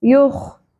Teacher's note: یخ پر ہوگا خراش اور کھردررا ہوگا · ख पुर होगा, खराश और खुरदरा होगा।